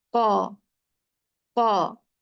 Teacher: फिर उसका मतलब क्या हुआ, ऊंचाई और बुलंदी, यानी इन हरूफ को अदा करते वक्त जुबान की जड़ ऊपर तालु की तरफ बुलंद होती है, ऊंची उठती है, जिसकी वजह से आवाज मोटी हो जाती है और ये हरूफ मोटे पड़े जाते हैं, जैसे कौला का कौ, कौ। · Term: इस्तेला